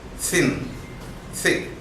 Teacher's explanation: When we produce this sound, air comes out of the friction. The upper teeth comes very closer to the tongue, but it does not touch, but the sound is produced with friction. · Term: dental